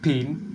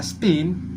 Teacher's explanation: Misalnya pada fonem pi dalam kata pain, pi diucapkan dengan aspirasi p. Dalam kata spin, pi diucapkan tanpa aspirasi pi. Meskipun terdengar berbeda, keduanya tetap dianggap bunyi pi.